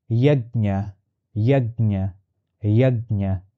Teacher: It is a palatal sound with nasalization. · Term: palatal and nasal consonant